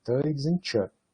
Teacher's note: essa diferença entre t e ch, você vai dizer que é uma variação livre, porque vai aparecer um som ou outro som, e do ponto de vista da língua como um todo, o que determina se vai aparecer ou não aparecer é alguma coisa não linguística, por exemplo, a proveniência geográfica e tal.